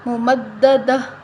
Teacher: اگر ہم اس پر وقف کریں تو ہم کیسے کریں گے، ممددہ، ممددہ، تا کے نیچے جو دو زیر ہیں وہ وقف کی صورت میں ختم ہو جائیں گی اور تا جو ہے وہ ہا بن جائے گی